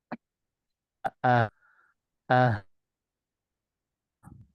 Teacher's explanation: Tasdid lebih kuat dia, hamzahnya harus tampak.